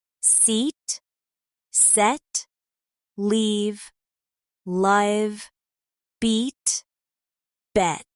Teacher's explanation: Notice how the first word in each pair has a longer, clearer vowel. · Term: vowel length